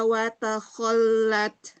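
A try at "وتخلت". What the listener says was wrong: Wa takhallat. Terlalu berlebihan taknya, hati-hati. Angin aja sedikit ya.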